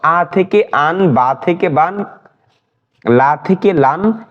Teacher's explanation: অর্থাৎ হরকতের উচ্চারণের মতনই তানবিনের উচ্চারণ, শুধু যোগ হবে দন্তান্ন।